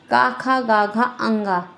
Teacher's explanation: जैसे क वर्ग क वर्ग में क, ख, ग, घ, ङ ये पांच वर्ण आते हैं और ये कंठ से बोले जाते हैं। इसलिए इन्हें कंठ वर्ण कहते हैं।